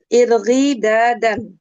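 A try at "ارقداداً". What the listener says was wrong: Panjang ininya kurang alif gitu.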